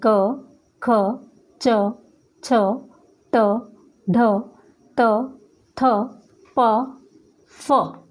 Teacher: अघोष व्यंजन, जिन व्यंजनों के उच्चारण करते समय हमारी स्वर तंत्रियों में कंपन नहीं होता, वो कहलाते हैं अघोष व्यंजन।